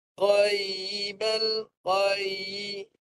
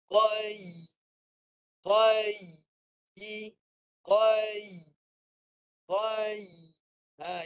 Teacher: huruf ya ni naikkan tengah lidah. Tengah lidah naik ke langit tengah bahagian tengah tu tinggi. Naikkan bahagian tengah lidah.